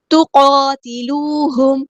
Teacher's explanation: ہے، تُقَاتِلُوهُمْ، قاف ہمارا ہیوی لیٹر ہے، پورا ادا کریں گے، واو مد آئی ہے 2 کاؤنٹ لمبا کریں گے · میم ساکن پہ اظہار شفوی اور ٹائم نہیں دینا